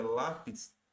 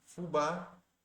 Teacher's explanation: a sílaba tônica ali o acento está na penúltima sílaba lápis e fubá Você pode ver o acento ali no a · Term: paroxítona